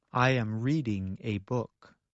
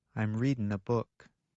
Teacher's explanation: In careful speech, Americans pronounce the G at the end of the verb.